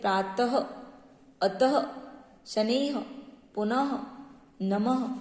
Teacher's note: विसर्ग का चिन्ह लगाते ही शब्द के अंत में ह की ध्वनि आती है।